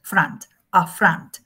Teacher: There is a schwa here because the first syllable is not accented. And the accent is in the second syllable, front, a front. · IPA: /əˈfrʌnt/